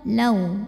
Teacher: ada wau sukun yang didahului baris fathah maka dibacanya cukup kita lembutkan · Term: harfulfulin